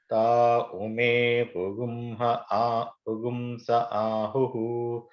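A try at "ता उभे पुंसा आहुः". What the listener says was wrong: Not Ume, it is Ubhe. Ubhe Pugumsa Ahu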